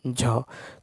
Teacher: तालव्य महाप्राण घोष व्यंजन वर्ण का उदाहरण झ है